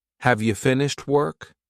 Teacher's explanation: In this sentence, the emphasis is on work, while have is weak.